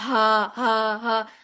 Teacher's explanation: ہا جو ہے یہ سینے کی طرف سے نکلے گا